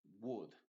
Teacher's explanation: Ahí básicamente la L es muda, así que no lo tienes que pronunciar.